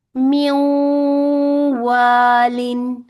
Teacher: नाकिस, ठीक है, वो म्यूं वाली आवाज निकल रही है, ना तो पूरा इजहार हो रहा है और ना ही पूरा इदगाम हो रहा है